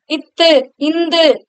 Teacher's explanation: இத்து இந்து அப்படின்னு சொல்லும் பொழுது நாக்கின் நுனி பகுதியானது மேல் பல்லின் அடிப்பகுதியை தொடுவதனால் பிறக்கும்